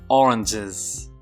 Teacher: if you want to say the plural of orange you know orange ends in a sibilant sound so you say oranges